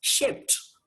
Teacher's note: P is a voiceless sound. So it will not take D after it. It will only take T after it.